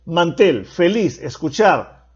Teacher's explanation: palabra aguda escuchar es una palabra aguda porque son agudas porque llevan la mayor fuerza de voz en la última sílaba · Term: palabras agudas